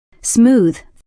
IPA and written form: smuːð (smooth)